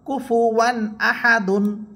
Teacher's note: এখানে দেখেন ওয়াও হরফের উপরে আছে 2 সবর, 2 সবরের পরে এখানে আসছে হামজা, হামজা আসার কারণে এখানে গুন্না হচ্ছে না।